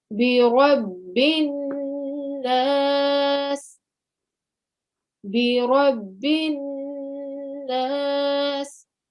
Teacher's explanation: to give a sustained 2-second nasal sound, because that's what we do in the rule of nasalization. And in this case, it is indeed a Nun Mushaddad.